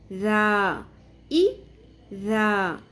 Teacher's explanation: ذال کو ہلکا پڑھنا ہے، نرمی سے ادا کرنا ہے۔ ز، ز میں سختی آئے گی، شدت آئے گی۔